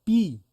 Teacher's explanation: লিপটা দেখো ছড়িয়ে যাচ্ছে, আর এরকম মুখটাও বন্ধ হচ্ছে, আর ঠোঁটটা একটুখানি চওড়া হয়ে যাচ্ছে